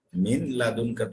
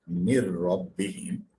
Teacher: there should not be any kind of gunna or nasal sound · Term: idgham bila gunna